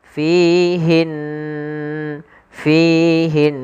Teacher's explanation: kita membaca dengan memasukkan suara ke rongga hidung kita maka fihin fihin sambil ditahan dua harakat kemudian pelafal Q di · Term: ghunah